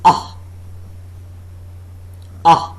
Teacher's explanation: The center of the tongue, or a part slightly in advance of center, is raised just above the fully open position. No contact being made between the tongue and the upper molars.